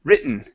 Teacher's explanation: We go from the vowel straight to the N and skip over the T. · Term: stop T